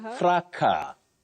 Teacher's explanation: That S is not pronounced in that word.